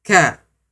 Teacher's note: Kemudian huruf kaf letaknya di bawah atau di depan qaf sedikit.